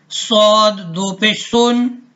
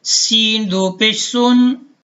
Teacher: سین اور صاد میں فرق ہم نے ایسے کرنا ہے کہ صاد موٹا پڑھا جائے گا جبکہ سین باریک پڑھی جاتی ہے